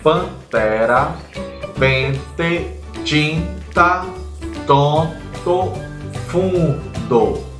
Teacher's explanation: algumas sílabas ou sons daquela palavra ele sai em pelo nariz · algumas sílabas ou sons daquela palavra, eles saem pelo nariz. E aí aquela sílaba, aquele som, aquela pronúncia é chamada de som nasal, que é possibilitada pela vogal. · você vai perceber que em algumas sílabas ou sons onde tem uma vogal e a letra N, você vai perceber que houve a vibração no seu nariz. Por isso, ali existe uma vogal nasal ou um som nasal.